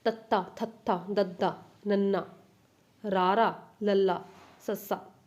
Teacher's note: ਜੀਭ ਦੀ ਨੋਕ ਉੱਪਰਲੇ ਦੰਦਾਂ ਦੇ ਪਿਛਲੇ ਪਾਸੇ ਨੂੰ ਜਿਹੜੀ ਕਿ ਛੋਹ ਕੇ ਜਿਹੜੇ ਕਿ ਵਿਅੰਜਨ ਧੁਨੀਆਂ ਪੈਦਾ ਹੁੰਦੀਆਂ ਨੇ ਉਹਨਾਂ ਨੂੰ ਆਪਾਂ ਕਹਿੰਦੇ ਹਾਂ ਦੰਤੀ। ਜਿਵੇਂ ਕਿ ਇਹਦੇ ਵਿੱਚ ਤੱਤਾ, ਤੁਸੀਂ ਬੋਲ ਕੇ ਦੇਖੋ, ਤੁਹਾਡੇ ਜੇ ਤੁਸੀਂ ਬੋਲੋਗੇ ਨਾ ਤੁਹਾਡੀ ਜੀਭ ਦੀ ਜਿਹੜੀ ਨੋਕ ਆ ਅੰਦਰਲੇ ਜਿਹੜੇ ਤੁਹਾਡੇ ਉੱਪਰਲੇ ਦੰਦ ਨੇ ਉਹਨਾਂ ਦੇ ਅੰਦਰਲੇ ਪਾਸੇ ਜਿਹੜੇ ਕਿ ਛੂਹੂਗੀ।